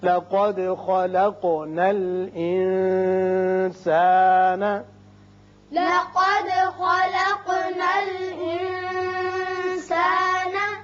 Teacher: یہاں نون پر اخفا ہوگا اس لیے کہ سین حروف اخفا میں سے ہے